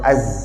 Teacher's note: Makhraj huruf zai adalah hujung lidah kita letak dekat belakang gigi bawah.